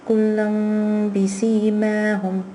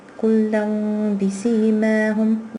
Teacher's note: because it's followed by a ba, the tanween has changed into the meme. The noon sakin has changed into the meme, so it's represented here. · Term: iqlaab rule